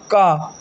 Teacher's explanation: कंठ होता है भैया क वर्ग का उच्चारण स्थान होता है कंठ